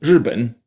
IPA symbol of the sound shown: ɻ̩